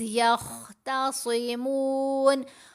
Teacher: خا صاد دونوں آوازوں کو یہاں ہم نے پر پڑھنا ہے، موٹا پڑھنا ہے